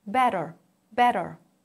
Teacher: both involve a quick light tongue tap against the upper gum better better there is no complete blockage of air flow that's